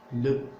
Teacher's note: l'article défini se termine par le E schwa